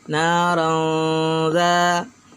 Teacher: Lanjut, sayasla mad tabi'i, naran, na mad tabi'i, randa tanwin bertemu dengan huruf dal, maka disebut ikhfa hakiki, harus didengungkan.